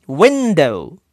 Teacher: Nah, untuk perkataan window, win-nya ditekan, window. Jadi ketika menggunakan cara yang menggunakan huruf besar, huruf kecil, win-nya ditulis dengan huruf besar semua, do-nya dengan huruf kecil.